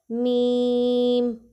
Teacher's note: ہمارے اوپر والا اور نیچے والا ہونٹ آپس میں مل رہے ہیں.